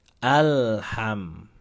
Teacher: lam ini jangan dipantulkan ketika sukun karena dia bukan huruf Qalqalah ketika sukun tugasnya adalah dialirkan nama sifatnya tawasut mengalir tapi hanya sebentar